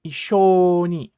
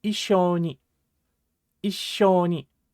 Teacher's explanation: Please make sure that you're putting an adequate pause between the single E sound and the sh sound, like Issho Ni, ne? But also make sure that you're not elongating that final vowel sound